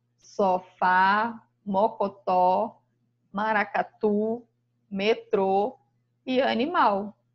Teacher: E as palavras oxítonas, encontramos a sílaba tônica na última sílaba